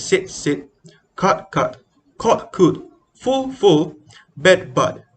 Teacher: short and long vowel are frequently neutralized in sap or singaporean english pronunciation · pairing of words that are fairly distinct in SSB have the same sound in Singaporean English